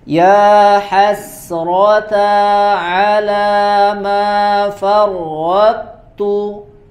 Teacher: huruf to sakinah ba'daha ta mutaharrikah ya, itu tidak diidghamkan secara kamil ya, bukan idgham kamil tapi idgham shogir ya